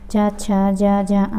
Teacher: ये तालु से बोले जाते हैं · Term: चा वर्ग